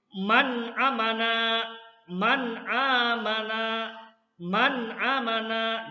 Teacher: Jadi harus betul-betul jelas, jangan sampai didengungkan nun matinya ya. Kalau didengungkan itu berarti salah tajwidnya, bukan bacaan ijhar lagi nanti.